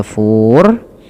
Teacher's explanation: Sukun arid itu sukun karena awalnya kan tafuru, gitu ya, tafuru. Kemudian karena waqaf menjadi tafur, yang dimana rohnya dimatikan. Nah, sebelum huruf roh ini, nah ini roh ini dinamakan dengan sukun arid, sukun yang muncul karena waqaf atau berhenti.